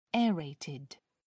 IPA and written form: ˈɛəreɪtɪd (aerated)